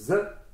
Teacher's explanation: le Z, c'est un phonème sonore, c'est Z, il est sonore, contrairement au S.